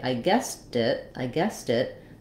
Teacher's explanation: the t turns back into more of a d because we use it as a flap when we link that final T sound